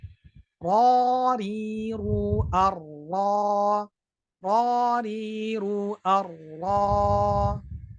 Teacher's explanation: Berarti kan pangkal lidahnya saja yang naik. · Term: isti'la